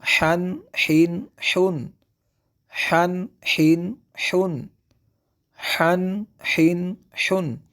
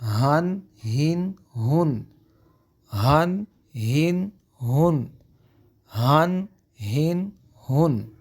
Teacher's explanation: حا کی آواز کو ہم وسط حلق سے ادا کریں گے، حلق کے درمیانی حصہ سے، اور جب کہ ہا کی آواز کو جو ہم حلق کے آخر والے حصے سے ادا کریں گے جو کہ سینہ کے قریب ہوتا ہے